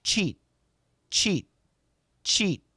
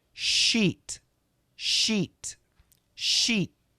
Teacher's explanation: when Americans do the CH sound, the tip of our tongue touches the skin behind the upper teeth. Okay, so we have upper teeth and we have lower teeth.